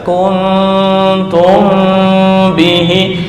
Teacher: Tum dengung 2 sampai 3.